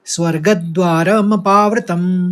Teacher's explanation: का उच्चारण निकालेंगे स्वर्गद कहेंगे फिर द्वार मपावतम स्वर्गद्वार मपावतम और द जो है वो बिल्कुल हस्व बोला जाएगा धीरे से